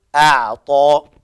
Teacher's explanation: الهمزة مرققة والعين فيها التوسط